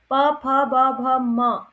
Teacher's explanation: और प, फ, ब, भ, म, तो यहाँ पर प, फ, ब, भ, म देखिए होंठ हमारे स्पर्श हो रहे हैं, प, फ, ब, भ, म सारे 5 के 5 व्यंजन बोलने में हमारे होंठ आपस में स्पर्श हो रहे हैं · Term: स्पर्श व्यंजन